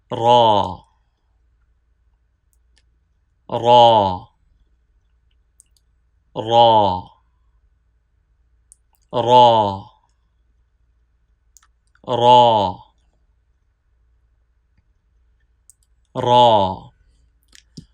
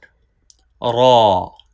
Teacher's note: Ra has full sound. Do not pronounce ra with thin sound. While pronouncing, raise tongue toward the palate.